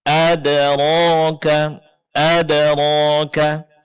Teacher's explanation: Di dalam surat Al-Qari'ah, kita juga akan mendapatkan adanya qalqalah, yaitu pada huruf dal yang berbaris sukun